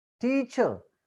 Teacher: R is not pronounced there.